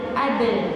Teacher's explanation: tapi dalnya tipis, bukan aldu.